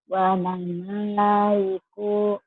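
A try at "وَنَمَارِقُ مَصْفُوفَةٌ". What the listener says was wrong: pendek. Maknya panjang. Wa namariku masfufah. Maknya panjang bener.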